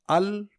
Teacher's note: अल बोलने में जुबान के दोनों किनारे शामिल है ना कि एक किनारा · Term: लाम की आवाज